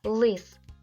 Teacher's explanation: перший звук л приголосний твердий